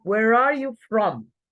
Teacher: I am giving stress to where and from.